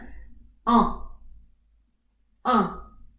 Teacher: you open your mouth widely, en, and your tongue is going at the back of your throat. The sound is coming from the nose mainly. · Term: nasal sound